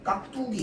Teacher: 어차피 기억 받침 뒤라서 두는 뚜로 발음될 거야. 그러니까 표기할 때 두로 적어줘도 어차피 뚜로 발음할 거야. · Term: 된소리